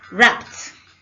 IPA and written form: rapt (Wrapped)